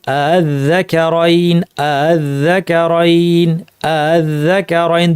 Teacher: দুইটা হামজাই আমরা পড়লাম, কিন্তু দ্বিতীয় হামজাটা হামজাতুল ওয়াসলটাকে তাসহিল করলাম, অর্থাৎ হামজা এবং আলিফের মাঝামাঝি জায়গা থেকে উচ্চারণ করলাম নরম করে